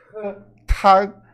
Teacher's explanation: Começa a letra T. Ela vai ser um pouquinho diferente do português. A gente vai falar soprada. Tag. E o G a gente não pronuncia.